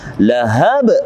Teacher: ba yang mati berada pada akhir ayat, maka kita bacanya dengan qalqalah kubra, pantulannya besar